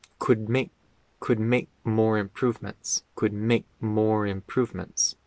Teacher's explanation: the word make isn't stressed in the sentence, and so it's pronounced very quickly.